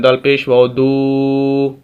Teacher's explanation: ہم دال کو واو کے ساتھ ملائیں گے کیونکہ واو ساکن ہے، اور دوسرا یہ کہ ہم اس کو لمبا کریں گے۔ دال کو واو کے ساتھ ملا رہے ہیں، ہم اس کو لمبا کر رہے ہیں، دال پیش واو دو۔ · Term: واو مدہ